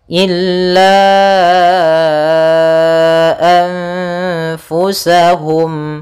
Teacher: yaitu ditandai dengan nun sukun bertemu dengan Fa cara membacanya yaitu nunnya disamarkan kepada huruf Fa seperti itu sambil ditahan gunahnya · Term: ikhfa